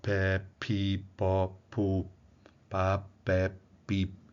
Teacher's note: O som da consoante anterior é interrompido para que ela seja realizada, que então não há vibração das pregas vocais na articulação dessas consoantes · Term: consoantes surdas, surdas